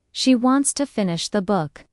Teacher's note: Stress wants and book, and let to finish the be soft and fast.